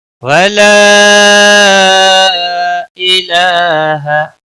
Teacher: ای کو کھینچنا نہیں، ہا کو بھی کھینچنا نہیں